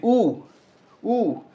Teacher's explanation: उसके बाद में ऊ, जीभ पीछे, ध्यान रखो होठ आपके जरूर गोल हो रहे हैं लेकिन जीभ पीछे जा रही है, ऊ, ठीक है। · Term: पश्च